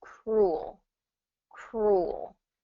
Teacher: Cruel technically has one vowel sound, so it's only one syllable. Cruel, ul, that oo sound is just one vowel sound.